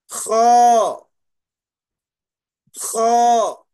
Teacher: اس کو جو ہے ابتدائی حلق سے پڑھا جاتا